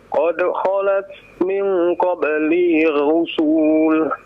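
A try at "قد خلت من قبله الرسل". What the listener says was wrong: Nah, lihat panjang pendeknya ya. Jadi panjangkan ya. Kalau diwakafkan ar-rusul ya, tidak dipanjangkan ya.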